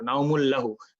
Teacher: immediately আমরা লামের উপরে টাইম পাস করব না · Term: ইদগাম